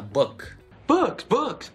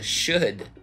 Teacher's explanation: Это звук «у», который вы пытаетесь сделать без округления губ. Вы говорите «у», у вас губы вытягиваются и округляются, и сжимаются. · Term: фальшивый «у»